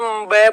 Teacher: केवल ओट होता है क्यों होता है क्योंकि जैसे ब बोलेंगे ब तो होट आपस में स्पर्श होंगे